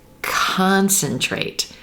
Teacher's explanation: the stress is actually on that first syllable the letter c-o-n the vowel sound at the core is stretched